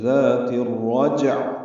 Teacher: عین وسط حلق سے ادا کرتے ہوئے اظہار کریں گے